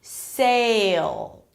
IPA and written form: seɪl (sale)